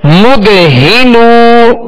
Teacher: نون واو پیش نو مد ہی نو. ہا کو ابتدائے حلق سے ادا کریں گے